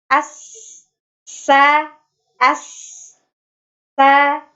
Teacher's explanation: pertama ada hams ya, mengalirnya nafas, as, sa, ya, bisa terdengar ya, ada aliran nafasnya.